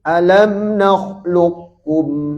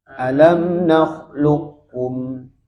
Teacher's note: Jadi qafnya tebal tapi qalqalahnya hilang.